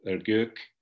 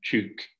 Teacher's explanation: Also, Bityas, along with several varieties of Musaler, has front rounded vowels like ö and ü. So ö in the number for two, ergök, and ü in çük.